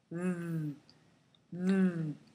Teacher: there is voicing. So pay attention to your throat and make a vibration v. The vibration should be quite strong.